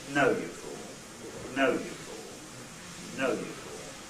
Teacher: Low fall is very similar, except it doesn't start high, it starts mid-pitch.